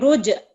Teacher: ایک تو کلکلا حرف آ رہا ہے جی جیم، جی اس پہ کلکلا کر کے پڑھیں گے